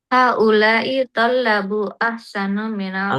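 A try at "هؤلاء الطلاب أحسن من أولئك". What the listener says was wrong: Enggak, bukan tolab, tulab. Haula'id tulab. Min ula. Oh, haula'i.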